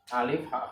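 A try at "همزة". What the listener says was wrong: Hamzah, jangan alif, bilangnya harus hamzah.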